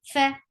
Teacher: Fa should have hums, the flow of breath.